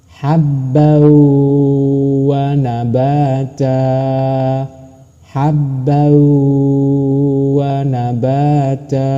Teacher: masuk dengan dengung ditekan dan ditahan dua harakat